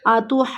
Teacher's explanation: अब ये लफ्ज़ थोड़ा सा हमें मुश्किल लग रहा है, हमें हाज पढ़ना है और जून पढ़ना है। जून, जीम को खींचने के बाद हमने फ़ौरन नून के साथ भी मिलाना है, आतुहाजूनी।